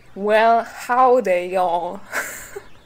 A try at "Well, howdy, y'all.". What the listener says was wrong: I can hear your throat tense up in the back.